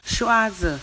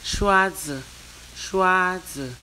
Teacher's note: Shua is the first tone, zi is a neutral tone.